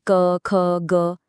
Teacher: गले से निकलने वाली आवाजें कंठिए हैं। जैसे क, ख, ग।